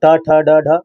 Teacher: ट ठ ड ढ आप सभी की मूर्धन्य ध्वनियां है